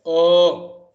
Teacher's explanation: you are supplying energy from the kantha, but you are obstructing its flow in the lips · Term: kantha oshtha